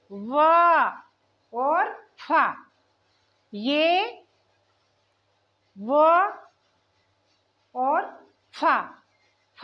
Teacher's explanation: जो वर्ण दांत और होठ की सहायता से बोले जाते हैं उन्हें कहते हैं दंतोष्ठ वर्ण